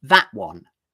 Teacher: when a t consonant comes at the end of a syllable, we can just use a glottal stop.